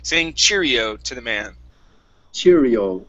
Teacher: so stress at the very beginning